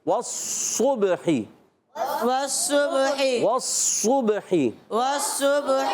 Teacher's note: واو میں بھی ہونٹ گول، صوت میں بھی